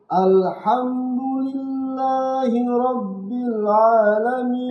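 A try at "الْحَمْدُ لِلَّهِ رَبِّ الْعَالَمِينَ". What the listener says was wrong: Nah, perhatikan tuh. Alhamdulillahi rabbil Jangan a. Kalau alamin, kenapa? Nanti kena apa hurufnya? Alamin kena alif. Berubah maknanya. Alhamdulillahi rabbil alamin.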